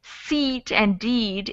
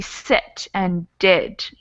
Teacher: it's a similar sound but it's shorter so instead of seat and deed it would be sit and did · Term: shorter sound